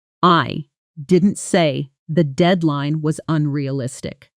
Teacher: If I stress the word I, it implies someone else said it. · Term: sentence stress